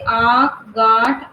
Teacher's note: नाक और मुंह से इसका उच्चारण होता है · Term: अनुनासिक